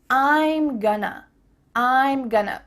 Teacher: We have a contraction, I am, and then we're reducing going to become gonna.